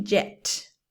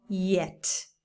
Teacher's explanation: jet we pronounce the J but yet is again very soft it's like a vowel